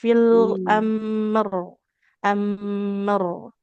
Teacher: jadi huruf ro itu harus ada sifat getarnya